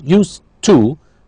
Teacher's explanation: we don't hear the D because we have what's called blending or elision